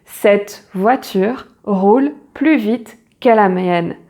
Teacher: So here again, you have an adverb following the plus, beginning with a consonant, so you do not pronounce the final S even if it means more